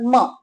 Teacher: म म्हणतो तेव्हा दोन्ही ओट एकत्र जोडले जातात